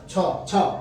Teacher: छ छ तालू से बोला जाता है